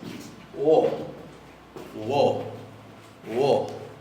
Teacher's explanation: Es como si le pusieran adelante una pequeña u.